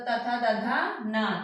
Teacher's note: ये सब दंत से उच्चारण किए जाते हैं।